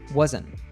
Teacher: the combination of the letters NT in wasn't often gets reduced by dropping the T sound · the letters NT in wasn't often gets reduced by dropping the T sound, wasn't. And because the following word, even, starts with a vowel sound, it gets naturally linked to the N sound from wasn't.